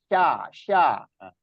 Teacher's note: Sifatnya tafasyi. Ya, banyak angin yang keluar menyebar.